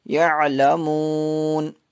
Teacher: فسوف میں واو لین ہے، واو ساکن سے پہلے زبر ہے اس لیے واو لین ہوگا